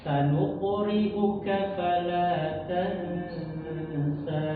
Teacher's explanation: Nah, tansa dibaca dua harakat ya. Walaupun secara penulisan itu ada bendera ya kan di situ.